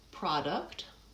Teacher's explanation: the syllable stress is on the first syllable